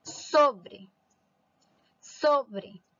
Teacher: La sílaba tónica es la sílaba so, por lo tanto, es una palabra grave.